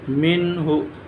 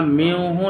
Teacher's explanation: یہاں میوہ نہیں پڑھیں گے، من ہو پڑھیں گے اظہار کر کے، کیونکہ نون ساکن کے بعد حروف حلقی میں سے یہ جو چھوٹی ہا ہے وہ آ رہی ہے، من ہو۔